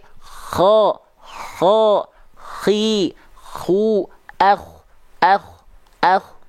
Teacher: karakternya akan seperti mendengkur walaupun bukan betul-betul dengkuran yang berlebihan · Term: huruf kho